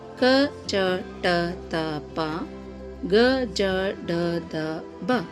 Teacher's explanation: ಕಡಿಮೆ ಉಸಿರಿನಿಂದ ಉಚ್ಚರಿಸಲ್ಪಡುವಂತಹ ಅಕ್ಷರಗಳೇ ಅಲ್ಪ ಪ್ರಾಣಾಕ್ಷರಗಳು. ಅಂದರೆ ಕಡಿಮೆ ಸಮಯದಲ್ಲಿ ಉಚ್ಚರಿಸುವಂತಹ ಅಕ್ಷರಗಳು.